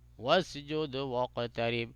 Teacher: واسجد میں دال پہ قلقلہ ہوگا واقترب قاف پہ قلقلہ ہوگا